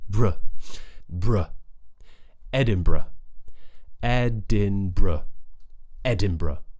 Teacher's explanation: Short schwa sound at the end.